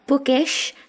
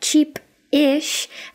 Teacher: when we have the more smooth, like bookish, the I is very soft, just eh. But when we do it with this pattern, like cheap-ish, the I is very harsh. Eh, cheap-ish.